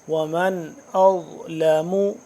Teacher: ضا کا مخرج زبان کو آپ سامنے کے اوپر والے جو دانت ہیں ان کے پچھلی سائڈ پہ لگائیں گے تو ضا اپنی جگہ سے ادا ہوگا صحیح طرح سے۔